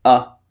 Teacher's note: your mouth is in a neutral position and it's very very short